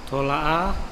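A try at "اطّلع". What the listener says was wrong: itola'a. Ya, itola'a. Jadi di tasdid. Kalau ini jelas di tasdid ya, karena tok ketemu tok. Itola'a.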